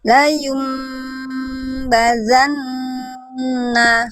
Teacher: Nah, nun tasdidnya tahan juga. Kadarnya sama dengan iqlab.